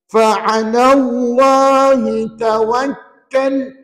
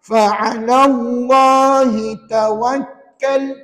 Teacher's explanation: bila wakaf ta itu jadi apa jadi mati sebut ta mati